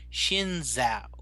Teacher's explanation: It's how you say a Z with your tongue up against the roof of your mouth. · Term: ZH sound